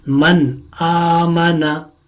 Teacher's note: یہاں پر نون ساکن ہے اور نون ساکن کے بعد حمزہ آیا ہے اور حمزہ حروف حلقی میں سے ایک حرف ہے، اسی مناسبت سے ہم یہاں غنہ نہیں کریں گے اور نون ساکن کو ظاہر کریں گے۔ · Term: اظہار